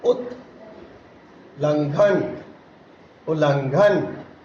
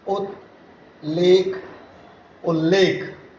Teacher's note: यदि त या द के बाद ल आए तो त या द ल में बदल जाता है